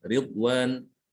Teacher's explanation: rok dibaca tipis apabila berharokat kasroh